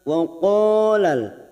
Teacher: huruf qo ini huruf istila maka kita tebalkan pada saat membaca Jangan tipis nanti seperti ka seperti Kaf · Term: huruf tebal